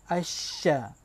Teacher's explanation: Huruf shin ini dia berada di tengah-tengah lidah.